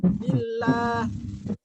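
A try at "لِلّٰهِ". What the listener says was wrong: ada tafkhimnya sedikit. Ada tafkhim lillah la. Jadi fathul Arab, fathul wasat ya. Fathahnya orang Arab itu fathah pertengahan.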